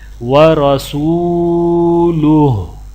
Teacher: عبدہ ورسولہ، یہاں پر کیونکہ کلمہ ختم ہو رہا ہے تو ہا کے اوپر الٹا پیش ہے، لیکن ہا کے الٹا پیش کو نہیں پڑھا جائے گا، صرف ہا کو ہا ہی پڑھا جائے گا